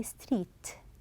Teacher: when you say T Street you are stopping the air with the T sound